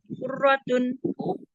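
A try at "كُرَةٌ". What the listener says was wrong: Kurotun, kurotu. Roknya tasdid enggak? Enggak ya.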